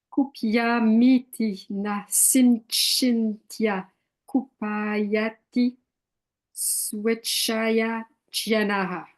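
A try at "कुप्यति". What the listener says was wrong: Okay, you put a vowel in there. You said kupyati. Kupyati, exactly so.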